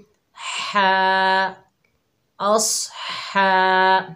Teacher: हा के ऊपर खड़ा ज़बर है, 1 अलिफ की मिकदार खींच कर पढ़ेंगे, हा को हलक के दरमियान से अदा करेंगे